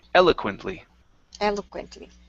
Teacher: the stress goes at the very beginning.